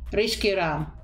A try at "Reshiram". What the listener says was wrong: No, non è un sk. Come Ed Sheeran.